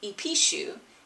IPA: ipiʃu